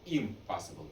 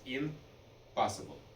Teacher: And the reason it's easier to say is because the e sound and the p sound are both pronounced at the very front of our mouth. The m is also pronounced there, but the n is a little further back. And it was very difficult to jump from front to back and back to front.